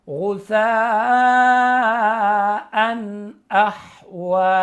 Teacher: کیونکہ یہاں پہ نون تنوین کے بعد حمزہ آ گیا حروف حلقی میں سے، تو یہاں پہ غنہ نہیں کریں گے